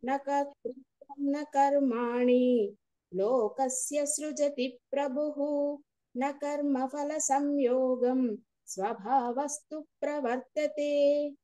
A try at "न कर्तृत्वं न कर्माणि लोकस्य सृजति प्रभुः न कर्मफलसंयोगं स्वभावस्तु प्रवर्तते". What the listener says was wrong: Right. నళిని గారు.